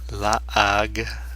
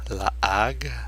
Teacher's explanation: Notice that H is silent.